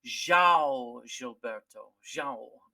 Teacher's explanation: It's kind of a nasal vowel, and we don't have it in our in our language.